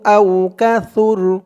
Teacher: মিনহু আওকাসুর কল্লা মিনহু আওসুর এই ত চিহ্ন হতে থামার কারণে র উপরে জবরটা সাকিন হয়ে গেছে সুর উচ্চারণটা একদম নরম করতে হবে